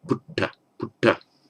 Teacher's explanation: So it becomes not pitta but putta, because the labial with the lips almost wants you to say ooh